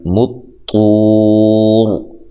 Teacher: طا کو موٹا ادا کرنا ہے، واو مدہ ہے، تو یہاں وقف اگر کریں گے تو یہاں مد کے ساتھ وقف کر سکتے ہیں لمبا کر کے، ٹھیک ہے، جیسے میں نے کیا ہے۔